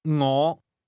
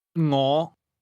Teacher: This word begins with a soft NG sound, something like the end of the English word singing.